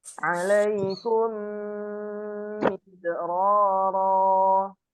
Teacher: Idgham syafawi. Ketika mim sukun bertemu dengan mim yang berharokat. Jadi didengungkan bacaannya.